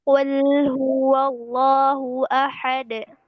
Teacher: di sini huwa jangan huwo, wo, jangan jadi wo